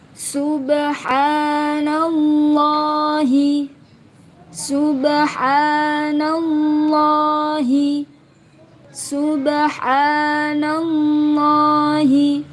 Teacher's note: Kalimat Allah yang jatuh setelah fathah maka wajib dibaca tebal ya. Kalimat tafhim, lam jalalah tafhim.